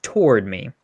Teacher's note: it is intense on the word toward and then it is relaxed on the word me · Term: accented syllable